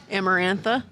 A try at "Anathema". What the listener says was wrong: That's how you say her name? I was like, there's a couple extra R's in there.